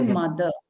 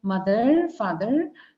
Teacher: that R is silent towards the end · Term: silent R